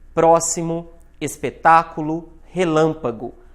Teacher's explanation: paroxítona proparoxítona sílaba tônica é a antepenúltima próximo espetáculo relâmpago agora o pró o tá e o lã São a mais forte